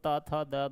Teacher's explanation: तो तवर्ग जो अपना होता है उसका उच्चारण स्थान दंत होता है